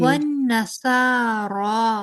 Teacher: दोनों को एक जैसा लंबा करना है, स्वाद को भी और रॉ को भी